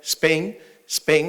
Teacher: es posible en cabeza silábica tener una sibilante más una oclusiva